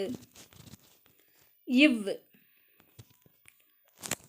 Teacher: மேல்வாய் பல்லை கீழுதடு பொருந்துவதால் பிறக்கும் எழுத்து